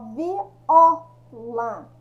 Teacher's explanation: Quando eu falo viola, é paroxítono ela, né? É a penúltima sílaba aqui